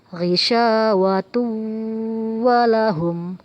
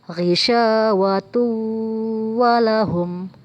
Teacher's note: ada tanwin bertemu dengan huruf wow kita baca dengung dan kita panjangkan